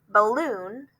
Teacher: we say that first syllable kind of shortened it's not the biggest part of the word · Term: unstressed syllables